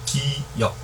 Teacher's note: 네, 발음기관을 본떴다. 그러니까 단적으로 우리가 기역했을 때 혀 뿌리가 목구멍을 막는 형상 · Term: 어금니 소리